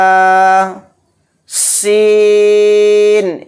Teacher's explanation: सीन इसमें बारीक सीटी निकालेंगे